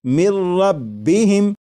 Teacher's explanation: لکھا ہوا ہے من، لیکن جب نون ساکن کو را میں ملا کر پڑھیں گے تو پھر نون ساکن کی آواز نہیں آئے گی، بلکہ میم کے بعد را کی آواز آئے گی، اور یہاں پر غنہ نہیں کریں گے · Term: ادغام